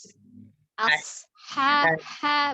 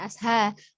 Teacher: Tebalkan di huruf sodnya, kemudian hanya H kecil ya dari tenggorokan bagian tengah.